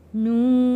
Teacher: نون کے اوپر بڑا مد ہے، یہاں پہ ہم نے اس کو 4 الف کے برابر کھینچ کر پڑھنا ہے